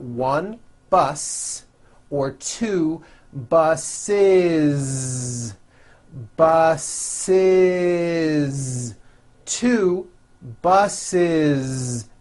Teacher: word bus for example bus ends with an S M bus so if you make it plural you're going to add the ending is with a voiced Z · the last sound you hear is that voiced Z